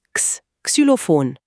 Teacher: Das X ist eigentlich eine Kombination aus 2 Lauten. Es klingt wie ein K und ein S zusammen.